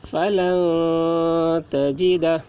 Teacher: نون ساکن کے بعد حروف اخفا میں سے تا آ رہا ہے، اس لیے نون کی آواز کو ناک میں چھپا کر پڑھیں گے، اس کو اخفا کہتے ہیں۔